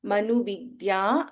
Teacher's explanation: ಮನುವಿದ್ಯಾ ಅಲ್ಪಪ್ರಾಣ ದ and ಯ it becomes ದ್ಯ